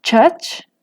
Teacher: es grac con este segmento nasal labializado al principio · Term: nasal labializada